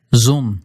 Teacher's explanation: just barely voiced it's almost an S